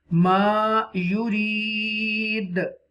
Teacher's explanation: Inna Allah yahqumu ma, this is alim madda, yurid, this is the ya madda, and a waqfan, this is the waqf tam here, end of the verse here, and this dal pesh do, it will be converted into dal sakina, and this dal sakina become dal qalqala letter, bouncing letter